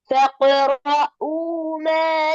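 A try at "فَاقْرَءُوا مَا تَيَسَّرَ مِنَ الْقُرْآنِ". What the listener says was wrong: நீட்டுங்க போதாது. فقرؤوا ما تيسر من القرآن. لا போதாது. فقرؤوا. فقرؤوا அந்த ஊரிட்டது போதாது.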